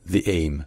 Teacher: un i qui est moins appuyé déjà, qui est plus court.